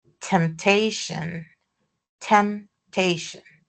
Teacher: The stress is in the first one, the first T. So, um the that first T is aspirated.